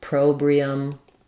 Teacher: o sound is going to be awah sound um and then we'll have the stress on the pro syllable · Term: second syllable stress